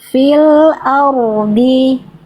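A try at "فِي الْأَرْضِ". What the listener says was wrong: rosukunya dapat jelasnya, tapi dotnya jadi hilang lagi ketebalannya. Tetap tebalkan dotnya. Fil ardi.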